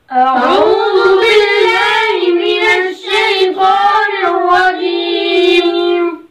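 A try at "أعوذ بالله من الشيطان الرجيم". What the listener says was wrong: अऊज़ु अऊज़ु हमज़ा है, फिर आइन है। ज़ाल को मोटा नहीं करें, ज़ाल को बारीक करेंगे।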